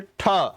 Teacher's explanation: दोनों दांतों से लगती हुई और ऊपर की तरफ जीभ उठ रही है, झटके से उठ रही है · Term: मूर्धन्य